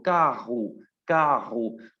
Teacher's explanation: ¿cómo hago sonar esa R? La tengo que hacer sonar con la garganta.